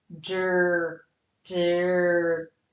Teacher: We hear the R. It's almost like we're sliding right into that R sound. So yes, it is a syllable that contains a vowel, and that vowel is a schwa E or an understressed E. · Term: R controlled